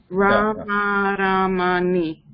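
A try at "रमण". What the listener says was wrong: No, just not at the end. Ramana. The last na, again keep remember, rolled tongue.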